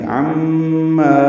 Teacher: ما الف مدہ ہے، دو حرکات لمبا کریں گے